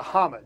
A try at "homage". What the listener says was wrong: You have to pronounce the H.